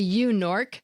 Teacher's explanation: The “Yew Nork” slip shows consonant sounds switching places – a sound exchange. Notice that each of the consonants is first in its own syllable.